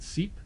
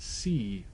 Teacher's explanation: E in seep is said very quickly, whereas the E in C is said a little bit more slowly. It's drawn out a little bit longer.